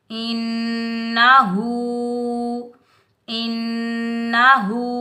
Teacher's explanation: نون مشدد حروف یرملون کے مجموعے میں سے آ رہا ہے تو یہاں ہم ایک الف کی مقدار غنہ کریں گے، بغیر کھینچے پڑھیں گے۔ · اس ہا کو سینے سے ادا کریں گے، ہا کے اوپر الٹا پیش آ رہا ہے تو اس کو ہم ایک الف کی مقدار کھینچ کر ادا کریں گے